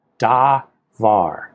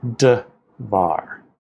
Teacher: their vowels, da, var, two long vowels, become d, var, a vocal shava and a patak